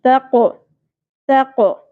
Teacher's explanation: قوف ساکن ہو جائے تو قلقلہ ہوگا اور قوف کو پر بھی پڑھنا ہے. تق نہیں پڑھنا، تق تق.